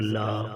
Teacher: حمزہ زبر آ، لام زبر لا، لام کے اوپر مد ہے، اسے 4 الف کے برابر کھینچا جائے گا